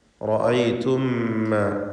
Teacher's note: സാക്കിനത്തായ മീമും ശേഷം ഹറക്കത്തുള്ള മീമും, ഇവ രണ്ടിനെയും ഇദ്ഗാം ചെയ്ത് മണിച്ച് ഒറ്റ മീമാക്കി ഉച്ചരിക്കണം. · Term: ഇദ്ഗാം ഷഫവി